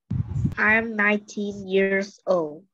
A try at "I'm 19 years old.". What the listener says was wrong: Very good. Nghe đọc cũng rất là ổn ha.